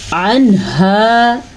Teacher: نون ساکن ہے اور اس کے بعد ہا آیا ہوا ہے، اگر ایسا ہو تو وہاں پہ نون کو یا نون ساکن کو یا نون تنوین کو ظاہر کر کے پڑھتے ہیں، اس قاعدے کو اظہار کہتے ہیں۔